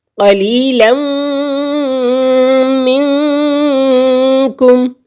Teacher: نون تنوین کے بعد میم حروف یرملون میں سے آ گیا تو یہاں پہ ہم ادغام کے ساتھ غنہ کریں گے.